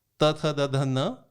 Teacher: इन सब में दांत पे छू रही है, ऊपर के दांत पे।